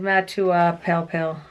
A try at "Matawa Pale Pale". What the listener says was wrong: No, you got to pronounce the vowels.